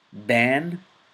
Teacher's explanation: the it's flat but in the barter the it's heavy ba the a is light in ban it's flat